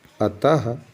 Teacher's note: अब विसर्ग को जान रहे हैं, इसका उच्चारण करते समय अ के बाद ह का थोड़ा ध्वनि हमें सुनाई देता है